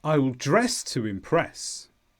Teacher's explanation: notice the stress is at the end of impress here it's the second syllable